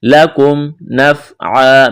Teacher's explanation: میم ساکن کے بعد نون ہے، اظہار کریں گے